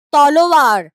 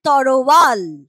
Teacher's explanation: ল আর র জায়গা পাল্টাপাল্টি করে নিয়েছে নিজেদের মধ্যে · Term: ধ্বনি বিপর্যয়